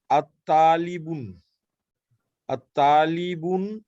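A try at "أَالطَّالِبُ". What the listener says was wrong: আত-তালিবু না, আ-তালিবু, আ-তালিবু, আ হলো কোশ্চেন। এখানে যে আ আছে সেই আটা কোশ্চেনের আ, যদি লাম থাকতো, আল থাকতো, তখন আমরা বলতাম আত-তালিবু, কিন্তু এটা তো কোশ্চেনের আ, এই কারণে আ-তালিবু আনতা।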